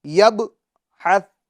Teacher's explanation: ثا ہے اس کو ہم نرمی سے ادا کریں گے، ٹھیک ہے، اس کے اندر سیٹی کی آواز نہ ہونی پائے